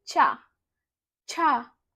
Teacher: आपकी जीभ है वो आपके तलवे को स्पर्श कर रही है, तो ये क्या हो गया, तालु।